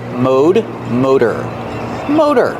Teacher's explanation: in American English we pronounce it with the long o Mo the t is a fast D mode motor motor they're